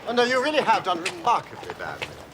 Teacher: The rhythm is punchy, strident, with sudden barks of sound.